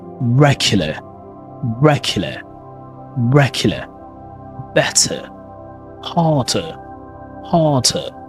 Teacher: Letter R, of course, in British English is totally silent. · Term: British accent